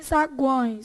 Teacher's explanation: se você fizer assim, sagões, seu nariz vai vibrar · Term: nasal, tritongo nasal